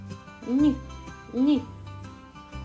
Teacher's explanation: Він звучить лагідно і м'яко. Звук ні м'який приголосний.